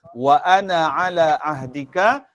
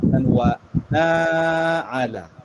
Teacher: Jadi ketika wasal, wa ana ala ahdika, jadi na tu dibaca dengan pendek kerana alif tu tidak berfungsi ketika wasal